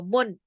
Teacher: अब पूरा इजहार हुआ, मुन, कोई आवाज नाक में नहीं गई